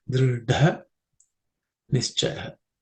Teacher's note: That dha, which is the fourth letter in the ta varga or ta category of sounds. So it has to be aspirated with extra air and some emphasis